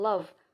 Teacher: the v sound make the lower lip and upper teeth come closely together, but not blocking the airstream, so it creates a friction. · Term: fricative